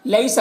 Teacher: یا ساکن سے پہلے لام کے اوپر زبر ہے تو یا لین ہوگا، اسے نرم آواز کے ساتھ جلد پڑھیں گے